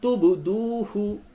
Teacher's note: با میں قلقلہ ہوگا